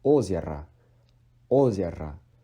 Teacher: the O at the back of the word is being de-stressed as A. So it's озеро, озеро, not озеро.